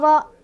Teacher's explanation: Ro-nya di sini punya dibaca secara tafkhim atau tebal karena ro-nya berbaris fathah.